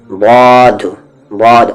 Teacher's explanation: اوپر کے جو مسوڑے ہیں، جو مولر ہے، وہاں پر آپ کو کنارے سے ٹچ کرنا ہے زبان کے